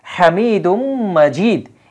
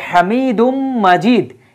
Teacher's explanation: তানউইনের পরে যদি মিম আসে তাহলে সে জায়গায় কি হয়, ইদগাম করতে হয়, অর্থাৎ সংযুক্ত করে একত্রে উচ্চারিত হবে